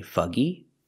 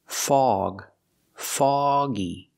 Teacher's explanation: we don't use the uh sound like cup and up we use the a sound like call ball log and dog